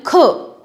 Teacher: तो उसमें आवाज़ थोड़ी सी ज़्यादा लगानी पड़ती है वायु, इसीलिए उसको कहते हैं महाप्राण